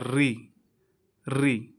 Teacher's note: उच्चारण के समय जीभ का अगला भाग मूर्धा यानी मसूड़े या कठोर ताल की ओर ऊपर उठता है।